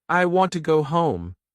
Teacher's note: Stress want and home.